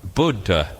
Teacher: you have to sound both the D and the DH